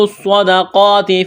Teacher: صاد میں سیٹی کی آواز پیدا کریں گے، صاد کو موٹا کرنا ہے